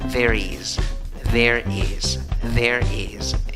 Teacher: La escritura es con S, pero la pronunciación es con Z. · La pronunciación es con I, también con una I débil, no es una I fuerte.